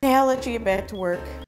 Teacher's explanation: the words are slightly stretched out longer used with emphasis and a higher pitch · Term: stress